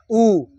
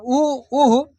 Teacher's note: देखिए उ कहने से ओठ से बोला था, ऐसे उ है ना, उ आ उह, तो दोनों ओठ से होता है, उ उह।